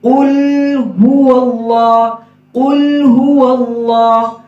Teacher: ہا کے اوپر پیش ہے اس لیے وہاں پہ ہمارے ہونٹ گول ہوں گے